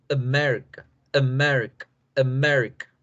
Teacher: la A no lleva el apóstrofe, por lo tanto, la fuerza va en Mérica